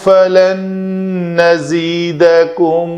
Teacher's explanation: نون کا نون کے اندر ادغام ہوا تو نون مشدد پڑھا جائے گا